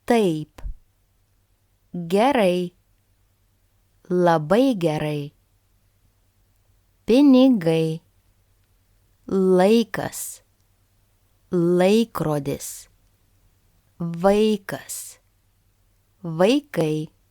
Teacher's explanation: I hope you could hear that the stress was on the first vowel A. If this diphthong is stressed, the stress can also fall on the second vowel sound I. So it will be pronounced as I.